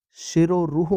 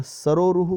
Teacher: एक में तालव्य श है और एक में दंत्य श है।